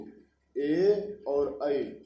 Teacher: ए और ऐ कंठ और तालु दोनों से मिलकर के उच्चरित होते हैं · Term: कंठ तालु